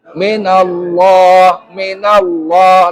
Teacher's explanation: Lafzul jalalah dibaca tebal. Hukum bacanya tafhim.